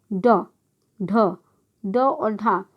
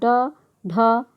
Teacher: जिन व्यंजनों के उच्चारण में जीभ ऊपर उठकर झटके से नीचे गिरती है उसे उच्छिष्ट व्यंजन कहते हैं।